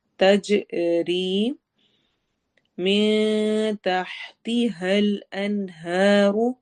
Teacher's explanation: ہم نے اخفا کرنا ہے، نون کی آواز کو چھپانا ہے۔ تج میں جیم کی آواز پر کلکلا ہوگا ، ری میں یا مدہ کریں گے، تج ری من تحتها